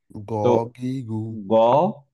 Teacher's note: গ completely clear, heavy, and হচ্ছে বাতাস বেরোচ্ছে না।